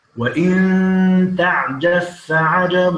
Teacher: هنا إدغام الباء في الفاء